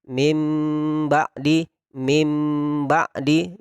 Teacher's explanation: Jadi didengungkan sedikit, disamarkan huruf ba sehingga menjadi mim ba'di. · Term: iqlab